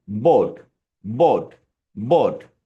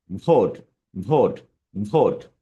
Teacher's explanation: যেমন আমার লিপসের দিকে দেখেন বি বিবি দুইটা ঠোট একসাথে হচ্ছে। কিন্তু যখন আমি ভি উচ্চারণ করব তখন হবে কি? ওপরের দাঁত আর নিচের ঠোঁট মানে দাঁত এবং ঠোট দিয়ে আমরা ভি উচ্চারণ করব।